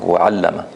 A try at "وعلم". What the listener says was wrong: Don't say Don't make it too long.